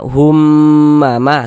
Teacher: Cara membacanya kita gunnahkan. Jadi di bagian humnya itu suaranya itu kita tahan, kita panjangkan sebentar. Hummama kita gunnahkan. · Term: gunnah musyaddadah